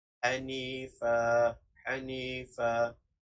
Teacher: Melainkan jika kita ingin menjadinya, ia akan menjadi mad bila gunnah, tetapi ini kita ingin mewakafkan, jadi mad iwad ganti dan dibaca dengan panjang 2 harakat, iaitu dengan bacaan Hanifa, Hanifa.